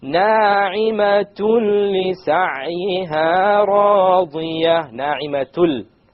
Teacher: Okay, because there's a tanween followed by a la. So we have the merging, the idgham, but we have it without ghunna.